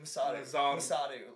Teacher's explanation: the R is almost pronounced like a D